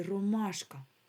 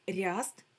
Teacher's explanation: в якому слові ви чуєте твердий р? В слові ромашка. А в слові ряст ми чуємо р м'який.